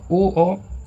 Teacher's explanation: और ओ औ कंठ ओष्ठ से है। तो दोनों में कंठ कॉमन है। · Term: संयुक्त स्वर